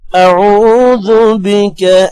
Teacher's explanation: عین کے بعد واو ہے، تھوڑا سا لمبا کریں گے، 1 سے 2 سیکنڈ۔ اعوذ بک، کا کو لمبا نہیں کرنا۔